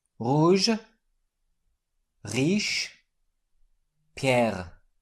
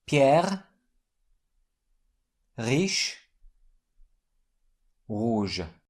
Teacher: this is a typical French gargling sound produced in the back of the throat.